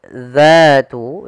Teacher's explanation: ujung lidah kita menempel dengan gigi di atas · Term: huruf dal